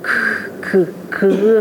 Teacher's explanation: 혓뿌리가 저 목구멍 쪽에 가서 붙는 형태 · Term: 어금니 소리